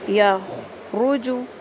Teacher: خا اور رو دونوں کو پر کریں